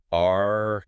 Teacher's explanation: the tip of your tongue curls back and pulls up towards the roof of your mouth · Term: American R sound